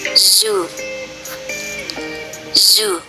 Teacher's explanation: The voiced alveolar fricative, transcribed as z, z, is the consonant in zoo